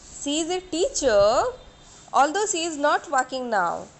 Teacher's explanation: rising tone is used when the sentence is not finished